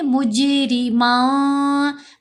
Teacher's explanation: جیم پر کلکلا، را کو باریک پڑھیں گے